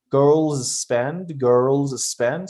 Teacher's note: just make it one and you say one s